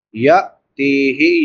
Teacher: یا کے بعد حمزہ ساکن ہے تو اس کو جھٹکے کے ساتھ ادا کریں گے۔ تا کے بعد یا مدہ ہے، ایک الف برابر لمبا کریں گے۔